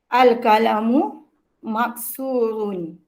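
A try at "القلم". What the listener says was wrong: Bukan kalamu, kalau kalamu perkataan. Qalam. Akak jangan samakan kal dengan qa.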